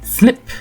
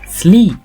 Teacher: Il s'agit alors d'un I bref, comme par exemple le I de slip, qui est contraire au I de sleep.